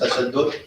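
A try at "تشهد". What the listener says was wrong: Tashahhud and sitting in the shahud. Tashahhud with a ha, not the dal.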